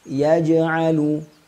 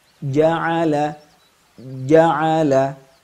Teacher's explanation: yang muncul dikarenakan pertemuan dua sifat kuat syiddah dan jahur ya huruf Jim qolqolahnya akan sangat nampak sekali ketika sukun tapi dalam keadaan berharakat Maka Ia tetap ada cuman melemah